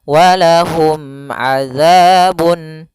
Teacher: Mim mati ketemu ain harus jelas yaitu izhar syafawi mimnya tidak boleh ditahan